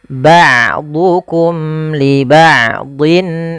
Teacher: Ain memiliki Salah satu sifat yaitu sifat bainiah yaitu tidak terlalu ditahan suaranya dan tidak terlalu dialirkan tapi tengah tengah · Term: sifat bainiyah